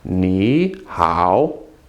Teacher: Okay, now one thing that a lot of the books say, and so I'm going to share it with you, is when you have 2 words in a row and they're both third tone, as in here, ni, third tone, hao, third tone, you make the first one a second tone. You change it to second, so actually it becomes ni hao.